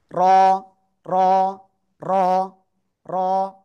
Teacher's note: জিহ্বার আগার পিঠ উপরে তালুর সাথে 1 থেকে 2 বার সংঘর্ষ লেগে এই অক্ষরটা উচ্চারণ করতে হবে।